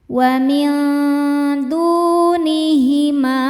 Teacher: Win du du hukumnya mad thobi'i zohiri. Sebab ada wau sukun sebelumnya dommah. Cara bacanya dipanjangkan dua harakat. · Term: mad tabi'i dhahiri